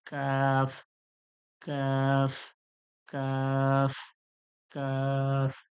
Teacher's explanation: জিহ্বার যে গোড়া রয়েছে, যেখান থেকে কফ বের হয়, ওর সামনে একটু আগে থেকে, ওর সোজাসুজি তালু থেকে